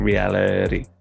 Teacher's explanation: it's not a harsh T, it's not a full D like a D, it's called a flap or a tap, because it's just a kind of flick of the tongue.